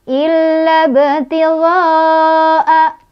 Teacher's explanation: Sukunnya bukan karena berhenti. Bacanya dipantulkan, pantulannya kecil. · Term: kokolah sugro